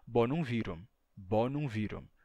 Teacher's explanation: a letra M Conserva o som ou seja não é muda